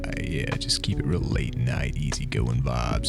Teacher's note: We're doing a late night video, so I figured I'd speak in vocal fry.